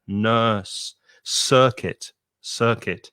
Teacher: it's a long vowel sound er like turn or nurse